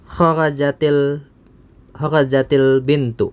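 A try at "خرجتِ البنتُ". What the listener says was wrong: naam. Kharajatil bintu.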